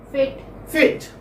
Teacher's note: centralized front unrounded vowel between close and half close position